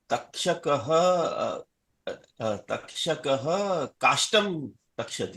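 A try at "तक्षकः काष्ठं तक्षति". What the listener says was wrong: Uttamam Mahodaya.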